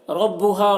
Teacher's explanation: را کو پور پڑھیں گے کیونکہ را کے اوپر زبر ہے